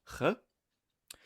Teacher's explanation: fricative sounds like a G with the back of the mouth and the back of the tongue. This primarily would have been the sound ch, probably voiceless, possibly voiced. · This primarily would have been the sound ch, probably voiceless, possibly voiced. Voicing is, the buzzing in the larynx.